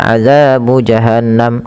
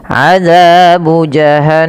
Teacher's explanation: Ingat gunah itu wajib ditahan nunnya